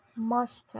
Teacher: Mazda is pronounced Mazda in both accents with a stress on the first syllable.